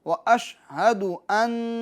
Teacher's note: نون مشدد میں گننا ہوگا